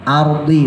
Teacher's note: rnya tebelin Ar karena jatuh setelah fathah